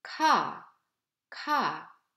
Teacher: It is never voiced and pronounced with a strong puff of air as you can see in English like kill, ka, ka. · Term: aspirate